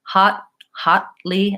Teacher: I move right from the tongue position for the T or for the D into the L.